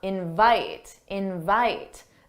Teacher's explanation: for the verb, the stressed syllable is the second syllable. Da-da, invite, invite.